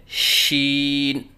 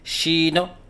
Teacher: آخر میں نون کے اوپر قلقلہ کرنا